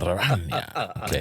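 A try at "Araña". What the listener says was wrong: Come on, roll the R, bro.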